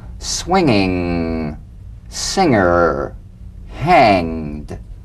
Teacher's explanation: Practice the medial ng, the ng in the middle of the word with no drum beat